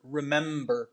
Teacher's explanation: we have an m and a b without any vowels in between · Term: consonant clusters